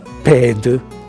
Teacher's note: Questo accade in tutte le posizioni, per cui se abbiamo per esempio nel dialetto aquinate dal latino pedem con la E breve che dà il suono aperto, nel dialetto aquinate abbiamo ped ugualmente con la E cioè aperta